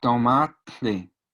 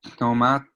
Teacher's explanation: Es un sonido adicional a la T que sale por nariz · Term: turbulencia